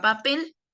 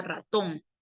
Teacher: ambas llevan la mayor fuerza de voz en la última sílaba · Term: palabras agudas